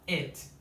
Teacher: É a letra I, que é uma vogal que é entre o E e o I. Não existe no português essa vogal. Ela é um pouco mais puxada pro E